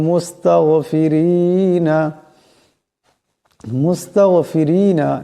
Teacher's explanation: গান সাকিন এই গানের আওয়াজটাকে মোটা করে পড়তে হবে